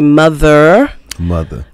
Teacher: don't pronounce the r at the end of word